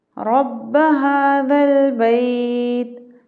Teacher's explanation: تا پہ ہم وقف کی صورت میں جزم پڑھیں گے اور کوشش کرنی ہے کہ تا قلقلہ نہ ہو۔